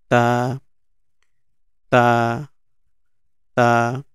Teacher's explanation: আমাদের জিভা উপরের দাঁতের দুই দাঁতের গোড়ার সঙ্গে লাগিয়ে গোড়ার সঙ্গে লাগিয়ে উচ্চারণ করব